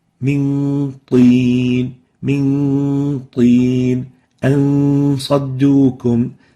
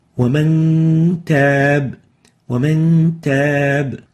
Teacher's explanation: So we keep the velarization of the hidden nun.